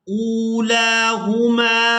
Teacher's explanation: یہاں حمزہ کو واو ساکن کے ساتھ ملائیں گے تو کھینچ کر ادا کریں گے، اور اس کے بعد لام کو بھی کھڑی زبر کی وجہ سے کھینچ کر ادا کیا جائے گا۔